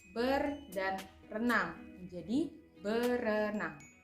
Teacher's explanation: hilangnya fonem R yang ada pada prefiks ber pada kata ber dan renang menjadi berenang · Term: Pelepasan fonem